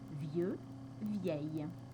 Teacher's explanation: un féminin spécial où on va avoir le double l qui va également se prononcer ye